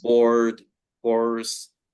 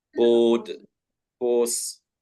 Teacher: for British English, it would just make the vowel sound longer